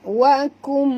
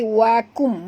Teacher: Rabbika wa kum, okay, nun mati bertemu dengan mim, idgham ma'al ghunah, dengung, ya, dua harakat. Wakum, tutup mulut, bukan wakun, ya, tapi wakum, masukkan bunyi nun ke dalam mim